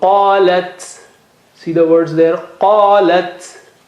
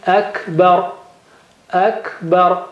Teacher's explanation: for ta and kaf, when they have sukoon, you make sure that there is hams